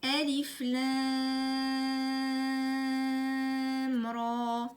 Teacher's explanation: Entre le mime et le ra, il n'y a pas de nasillement. Et il faut prolonger le ra 2 temps.